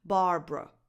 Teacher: The last vowel is a schwa, so it's a neutral, undefined vowel. So not a specific lip shape. Barbra. So you say br, and then you release that neutral sound, whatever comes out.